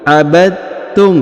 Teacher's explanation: langsung dileburkan huruf dalnya diliburkan ke ta tanpa harus membaca lagi huruf dalnya dengan bacaan qolqolah atau pantul